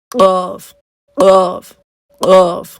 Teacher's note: زبان لگ تو اپنے مخرج ہی پہ رہی ہے لیکن اس میں پھر کیا ہوتا ہے کہ بہت زیادہ ایک پٹخنے کی سی آواز ہی ہو رہی ہوتی ہے